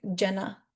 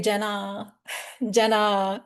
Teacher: If someone were to say Jenna, Jenna, it's not wrong, but what's happening is I'm lengthening the last vowel of my name